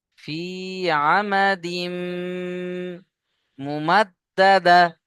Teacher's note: ফি আমা, দাল মিম জের দিম, এখানে গুণনা করবেন। তানবিনকে মিমের সাথে মিলিয়ে গণ্য করবেন